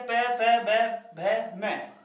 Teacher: ये इनको जब बोलेंगे ना तो दोनों होठों की आवश्यकता जरूर होगी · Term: ओष्ठीय व्यंजन